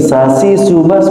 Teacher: Jadi Shin dibacanya Sin aja biasa gitu kan.